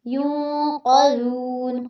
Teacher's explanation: ولا ہم میں لا پہ مد اصلی ہے، ہم یوں پہ آپ نے اخفا کرنا ہے، ناک میں آواز جائے گی۔ ینقذون، قاف کو پر کرنا ہے جبکہ زال کو باریک کرنا ہے اور لمبا بھی کرنا ہے۔